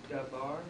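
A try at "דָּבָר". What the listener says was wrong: Hear the V sound. It's not dabar, but davar. Got it? Very good.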